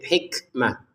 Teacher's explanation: Yu'til hikmata man yasha. Al hikmah kita kaf keluarin nafas sedikit